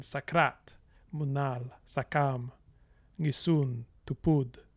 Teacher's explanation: So the main stress will always be on the major syllable. So you have this kind of iambic pattern